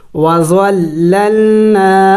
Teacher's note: تو ضال لام زبر زول، لام لام زبر لل، وظلل، نون الف زبر نا، وظللنا، الف مدہ ہے، نون کو ایک الف کے مقدار لمبا کرنا ہے